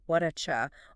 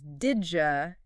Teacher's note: what are you can naturally reduce to something like whatacha or did you becomes didja in fast speech